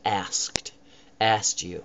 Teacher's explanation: I don't even put the K in at all